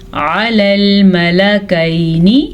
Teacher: عین کے مخرج کو واضح کر کے پڑھنا ہے کیونکہ عین حلق سے نکلتا ہے